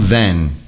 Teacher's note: bem claro que é nasal eu faç anasalado tá bom e prolonguem não cortem esse som é preciso deixar Claro para o seu interlocutor que é um som nasal